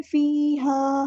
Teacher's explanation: یا مد آ گئی ہے تو فی کو لمبا کریں گے، ہاں الف مد آ گئی تو ایک الف کے برابر لمبا کریں گے